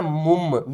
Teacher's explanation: میم میم دو پیش مم. ٹھیک ہے, جو لاسٹ میں نون کی آواز آتی ہے اس کو ہم نے نہیں پڑھنا, میم کو ساتھ ملانا ہے